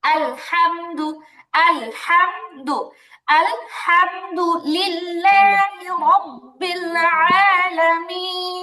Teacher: মিম সাকিনে ইজহার হবে, মানে স্পষ্ট করে পড়তে হবে গুন্না ছাড়া।